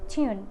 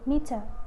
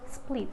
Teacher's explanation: The next sound is T. T is voiceless alveolar stop, and for the initial position is tune, for the medial meter, and the final is split.